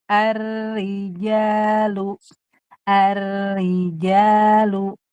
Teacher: Ro tasdid kasrah dibaca tipis